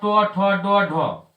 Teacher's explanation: तो इसका उच्चारण मूर्धा से होता है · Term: टवर्ग